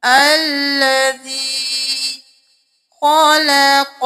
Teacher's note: تو ہم یہاں پہ حمزہ زبر لا، اللہ زبر لا، اللہ۔ الذی خلق، خو موٹا، قوف موٹا، لام کو موٹا نہیں کرنا